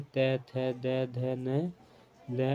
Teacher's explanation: दांत और जीभ के स्पर्श से बोले जाने वर्ण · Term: दंतीय